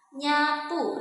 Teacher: Nah, udaranya keluar nih melalui rongga hidung, teman-teman. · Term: bunyi nasal